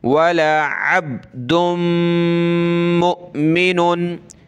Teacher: नाक में आवाज़ पैदा करेंगे और हमज़ा साकिना पर झटका देंगे